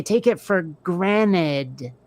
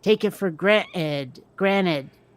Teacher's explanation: there's a very faint glottal stop for the T